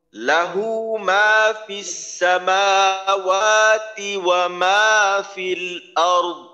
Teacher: দরের উচ্চারণে ধাক্কা লাগাইয়া কলকলার মত করা যাবে না নরম ভাবে দ্বের উচ্চারণ শেষ হয়ে যাবে